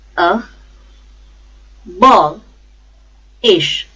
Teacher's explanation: the stress is on second syllable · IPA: /əˈbɒlɪʃ/